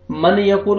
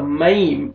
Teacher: नून को या में हम दाखिल कर देंगे, ठीक है, और हम गुन्ना करेंगे